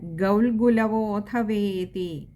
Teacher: പിന്നെ ഗൗൽഗുലവോധവേതി, അവിടെ വിശ്ലേഷണവും ഉണ്ടിടയ്ക്ക്, അതുകൊണ്ട് തന്നെ ഒകാരം നീട്ടിയെടുക്കണം